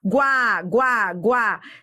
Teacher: Semivogal mais vogal. Então, isso é o quê? Ditongo. E repare que eu vou do fraco, ó, pro forte. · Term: ditongo crescente